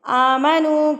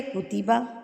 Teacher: آمنو اس پیش والے کو تو میں نے کھینچا ہے، لیکن میں کتبہ کے پیش کو نہیں کھینچ رہی۔